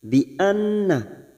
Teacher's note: nun yang bertasdid, gunnah musaddadah. Kita tekan selama 3 harokat dan kita dengungkan